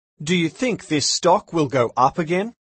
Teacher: note that the intonation goes up at the end of these questions